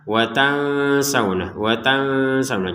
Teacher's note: Kemudian nun sukun bertemu sin ini kita baca dengan samar.